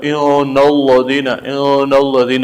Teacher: نون به مشدد ادا کوي، غنه به ادا کوي د یو الف په مقدار باندې